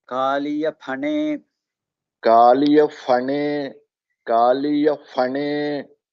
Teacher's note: So in Sanskrit it is not a fa. Maybe in Hindi they use the word fal, Phane. but in Sanskrit it is pa only. The Mahaprana.